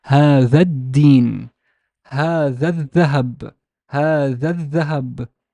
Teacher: the Hamzat al-Wasl and the lam are completely omitted or completely elided if something comes before it, if it's not word initial.